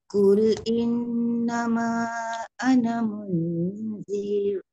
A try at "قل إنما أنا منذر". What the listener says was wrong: منذر pendek je.